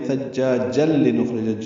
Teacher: ملانے کی صورت میں ثجاجل لنخرج، جیم کو لام سے ملانا ہوگا